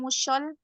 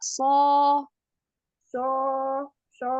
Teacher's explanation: pada huruf sod, nggak ada sofirnya ya. Jangan musyol, tapi muso.